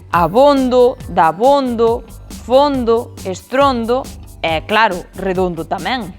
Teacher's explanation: O que sae redondo é que sexan con o pechado as palabras terminadas en onde.